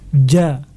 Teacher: dilafazkan dengan membiarkan lidah berada di dasar mulut tanpa diangkat sehingga suaranya tipis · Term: istifal